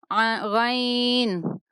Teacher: غین، ادنائے حلق سے ادا ہوگا، غین۔ اس کو عین غین نہیں پڑھیں گے، جبکہ کچھ لوگ ابھی بھی تھوڑا سا عین غین کی آواز دیتے ہیں، جبکہ اس کو پڑھیں گے عین غین۔